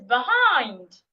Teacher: There's the second syllable that I'm saying louder, longer, and clearer.